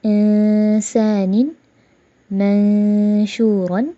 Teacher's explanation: نون کی آواز کو چھپایا بھی اور غنہ بھی کیا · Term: اخفا